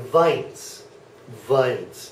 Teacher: the W uh sounds like a V